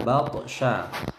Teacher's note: toknya mantul kecil, qalqalah sughra, batasya, syanya tebal.